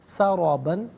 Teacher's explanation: را پر زبر ہے، را کو پر کر کے پڑھیں گے، با پر 2 زبر کی تنوین ہے، وقف میں الف سے چینج ہو جائے گی، وقف کریں گے تو سرابا پڑھا جائے گا۔